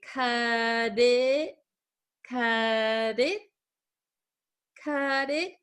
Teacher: this is going to change to a flap T also so it's going to sound like a D sound